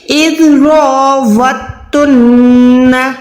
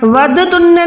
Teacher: تو آپ کو میں نے یہ کئی دفعہ بتایا ہوا ہے کہ جب بھی شد آتی کسی حروف پہ تو وہ پیچھے والی نشانی یعنی حرکت کے ساتھ ملاتا ہے. تو یہاں پر تا کو آپ نے واو کے ساتھ ملانا ہے. کیسے ادا کریں گے, اِذْرَوَتُنَّ, وَدْتُنَّ نہیں ہے, اِذْرَوَتُنَّ اِذْرَوَتُنَّ, صحیح ہے.